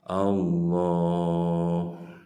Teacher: Di atas huruf lam ada fathah berdiri, ini masuk mad tabi'i. Berapa panjangnya? Panjangnya 2 harokat.